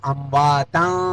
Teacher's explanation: نون تنوین کے بعد حروف اخفا میں سے فا آ گیا یہاں بھی اخفا ہوگا